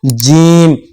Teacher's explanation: बीच वाला जो हिस्सा है जबान का वो ऊपर तालू में जाकर टच होता है, फिर जाकर ये वाला हरफ अदा होता है।